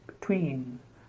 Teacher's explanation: so the first syllable is almost like the schwa sound